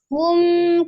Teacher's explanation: Tapi dikembalikan ke makhrajnya Bertemunya dua bibir ya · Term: mim sukunnya